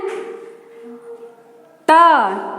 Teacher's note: ट बोलने में आपका जबान जो है वो मुड़ रहा है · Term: मूर्धा